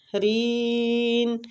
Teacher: رین، تو ادھر ہم نے مد عارض سکون کرنا ہے